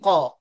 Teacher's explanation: Qa kena rasa dekat belakang sekali. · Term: qaf